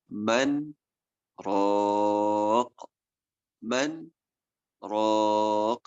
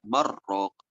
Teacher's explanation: nun sukun bertemu dengan ro tidak boleh dibaca idgham, tetapi dibaca izhar karena saktah